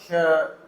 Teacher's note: मूर्धन्य है और अघोष है, अघोष यानी इसमें कंपन नहीं होती, श में कंपन नहीं होती बोलने में